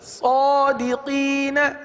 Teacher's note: جب صادقین پڑھا تو اس وقت ہم نے ایک الف تک کھینچا. صادقین قی کو ایک الف تک کھینچا.